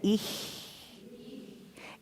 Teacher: So we're started with So the tongue is, dorsum is at the hard palate, and you're just going to blow over it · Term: ich-laut tongue